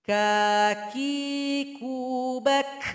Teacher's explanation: Ketika sukun jelas sekali bunyi hamas. Ada nafas yang mengalir. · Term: huruf kaf